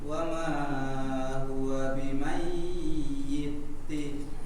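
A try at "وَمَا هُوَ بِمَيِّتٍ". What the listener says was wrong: Mayyi. Tidak digunnahkan tetapi ditasydidkan, cukup ditekan. Bimayyi, mayyi. Kalau dia terlalu panjang nanti dia menjadi gunnah ya. Bimai. Karena mimnya tidak tanwin, jadi tetap kita baca dengan tasydid biasa.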